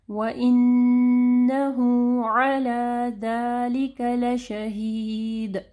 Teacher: مد صلہ صغرا ہے، یعنی 2 حرکات کے برابر ہم اس کو لمبا کرتے ہیں. عین کو واضح پڑھنا ہے گلے کے درمیانی حصے سے. · عین کو واضح پڑھنا ہے گلے کے درمیانی حصے سے. ذَلِكَ لَشَهِيدٌ دال کے اوپر کلکلا ہوگا.